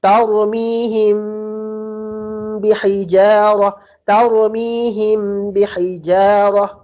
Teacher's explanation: Yang pendapat kedua, membaca dengan menutup bibir namun tanpa ada penekanan